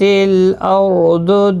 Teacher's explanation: ضاد حروف مستعلیہ میں سے ہے، پر پڑا جائے گا